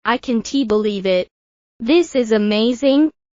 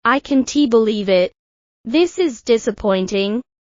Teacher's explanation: Notice how the rise in intonation shows excitement, while the fall indicates disappointment.